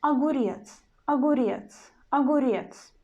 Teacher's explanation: there is O in the very beginning of the word. O is from the exception, and that's why it changes to the A.